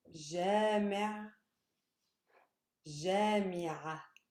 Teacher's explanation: in stress-wise, there's no difference. They both stress the first syllable. However, the last one ends with an a.